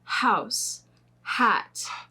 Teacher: You need to put your hand on your throat here when you say house, hat. If you put your hand on your throat, you can feel that there's no vibrations